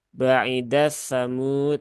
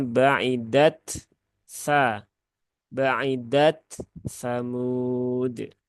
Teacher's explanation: taknya tunaikan dulu, baru pindah ke sa ya. Jangan diidghamkan. Di situ tidak terjadi idgham.